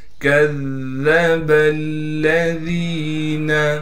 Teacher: ذال کے بعد یا مدہ ہونے کی وجہ سے ذال کو ایک الف کی مقدار کھینچیں گے اور ذال کو باریک کر کے پڑھیں گے